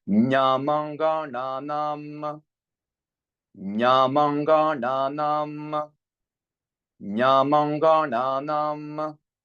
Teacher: So we have here ny, which is palatal, m bilabial, anga guttural, n retroflex, n dental, and again m.